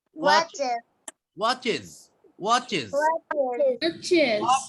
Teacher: উচ্চারণটা এস এর মতো হবে না, উচ্চারণটা কিসের মতো হবে? জেড এর মতো হবে, আর এর আগে একটা আই এর মতো লাগাতে হবে উচ্চারণের বেলা, বানানের বেলা নয়।